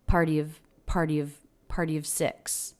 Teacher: she makes a really quick V sound along with the schwa